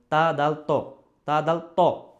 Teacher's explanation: তা উচ্চারিত হচ্ছে মূলত জিহ্বার আগা, দাঁতের গোড়া, উপরের দাঁতের যে গোড়া।